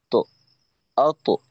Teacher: এখানে ক্লিয়ার একটা আওয়াজ থাকবে অত তত এই ধরনের একটা আওয়াজ তত আওয়াজটা কিছুটা জবরমুখী বাকি যেন পরিপূর্ণ জবরের মত আত ত আত এমনটা হয়ে না যায় আত হামজা ত জের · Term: কলকলা